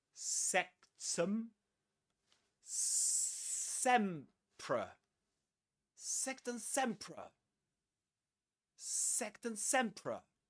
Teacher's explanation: Sectum. There's a schwa there in the second syllable.